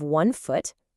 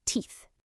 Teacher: The ooh sound changes to an e sound. So you have one foot, but two feet. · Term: vowel swap